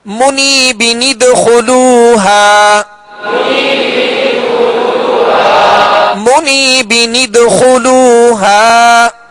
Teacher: با کی تنوین کے نون ساکن کو زیر دے کر نون قطنی کا قاعدہ لگاتے ہوئے نون قطنی کو دال سے ملا کر پڑھیں گے